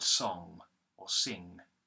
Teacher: You've got larynx, which begins with a light L going into an A vowel, then another R consonant going into a short I vowel, like in the word kit or in, and then the NG consonant using the back of the tongue